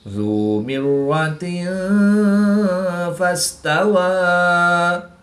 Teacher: 2 زیر کی تنوین کے بعد فا حروف اخفا میں سے ہے، تو یہاں پر ہم اخفا یعنی غنہ زمانی کر کے پڑھیں گے